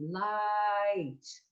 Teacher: the word light has an ah and an e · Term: diphthongs